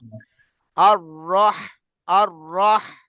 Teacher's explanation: কণ্ঠনালীর মাঝখান থেকে বড় হা